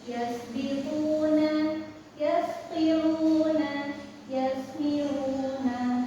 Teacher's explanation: untuk ta itu sifat dan suaranya mengalir